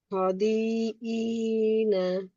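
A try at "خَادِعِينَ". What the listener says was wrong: খয়ের আলিফ miss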